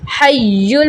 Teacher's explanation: وَہُوَ حَيٌّ، یہاں دیکھیں ہا یا زبر حی، یا لام 2 پیش یل، حی، مشدد حرف ہے، اس کو سختی سے اور ذرا دباؤ دے کے رک کر پڑھا جائے گا